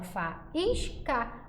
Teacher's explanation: o i ele é plenamente pronunciado por isso eu sei que nesse caso ele é vogal